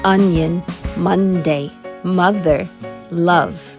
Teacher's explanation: The O is not making its normal sound, it's making the short U sound